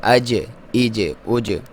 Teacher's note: جیم حروف کلکلہ میں سے ہے، جب اس پہ ساکن ہوگا تو آپ نے کلکلہ کرنا۔